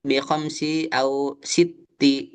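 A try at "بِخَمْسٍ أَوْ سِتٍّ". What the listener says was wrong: Ditanwinkan aja Pak. Bihomsin, bihomsitin.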